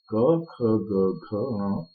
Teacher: क वर्ग जो होते हैं कंठस्थ होते हैं, क्योंकि हम इनका उच्चारण कंठ से करते हैं।